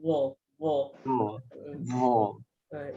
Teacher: Walaupun sebutan dia dah zo, tapi dia mahraj dia kena keluar lidah. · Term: huruf zo